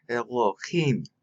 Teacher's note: They wanted you to say the him with the stress. And so they want you to say Elohim.